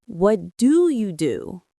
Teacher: The stress is on the last do.